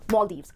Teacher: दो syllables हैं, इस word को आप जब break करोगे तो दो part पे break करोगे, पहला syllable है mall और दूसरा है Deves, जिसमें जो stress आएगा वो पहले syllable पर आएगा, पहले syllable को आपको बोलना है mall और फिर Deves, Maldives.